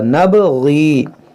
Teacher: यहाँ पर तो मद्दे मुनफसिल है, इसको ज़्यादा खींचेंगे और ये सबको जो है एक अलिफ के बराबर खींचेंगे. यहाँ या साकिन से पहले ज़ेर है, या मद्दा है और बा में कलकला होगा